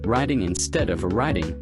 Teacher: soften T to sound like a D